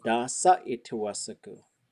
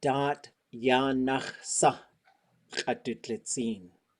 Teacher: if you put anything in between da and sa, it'll close it off with that T sound